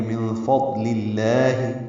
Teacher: من فضل اللہ میں نون ساکن کے بعد فا آنے کی وجہ سے اخفا ہوگا، نون کی آواز چھپائیں گے · لام اسم جلالہ کو باریک پڑھیں گے